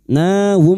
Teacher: mim sukun bertemu fa mim sukun dibaca jelas tanpa mendengung idhar syafawi